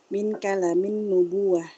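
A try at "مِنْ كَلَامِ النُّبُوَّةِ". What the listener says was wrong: Min kalamin nubuwah. Min kalanya panjang.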